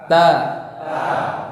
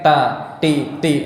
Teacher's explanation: tempat keluarnya adalah ujung lidah dan pangkal gigi seri atas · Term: huruf ta